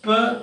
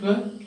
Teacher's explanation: whether you are using aspirated P, per or unaspirated per, it doesn't make any change. Then they are not in contrastive relationship or relationship of opposites.